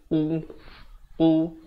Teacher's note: Makhrajnya di belakang lidah. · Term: Qu